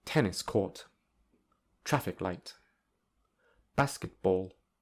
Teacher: the third syllable, which is the second word, has secondary stress.